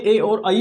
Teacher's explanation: इनका उच्चारण स्थान है कंठ तालु, कंठ तालु, कंठ तालु, अर्थात कंठ और तालु दोनों मिलके, दोनों से प्रयत्न करके ए और आई बोली जाती है।